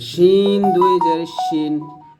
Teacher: জিহ্বার মধ্যখান তার বরাবর উপতলার সঙ্গে লাগবে